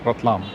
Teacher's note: they don't love to roll their RS and usually the r sound is replaced by the L Sound therefore this place was called ratlam the modern city of ratlam